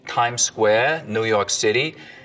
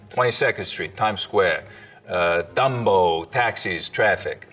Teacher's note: The tongue tip hits the teeth, or close to them, on TD and N sounds instead of, a little further back. So you can hear that in like this kind of New York City accent, tongue tip on the teeth, Times Square, New York City, and this kind of New York accent, 22nd Street, Times Square, Dumbo, taxis, traffic, and so on.